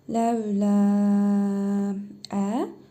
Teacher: Sonra əlif gəlib. Məddi munfasıl qaydasına görə ləm əlifi 4 əlif miqdarı uzadaraq oxuyuruq.